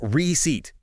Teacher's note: that P in receipt is totally silent. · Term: silent P